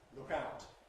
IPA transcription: ˈlʊk ˈaʊt